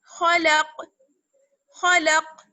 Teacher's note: تو یہاں پر قاف ہمارے پاس ہے اور قاف پر ساکن لگ گیا، ہم نے زبر کو ساکن کے ساتھ چینج کر دیا، تو اس لیے یہاں پر ہم وقف کریں گے اور پلس ایکسٹرا ہمارے پاس کیا چیز ہے کہ یہاں پر قلقلہ بھی ہوگا. خلق، قلقلہ مینس آواز لوٹ کر آئے گی، قاف کی آواز لوٹ کر آئے گی اور آواز بند نہیں ہوگی